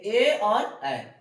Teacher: ए और ऐ ये दोनों कंठ और तालु से मिला के बोले जाते हैं। इसलिए इसको कंठ तालाव्य वर्ण बोलते हैं।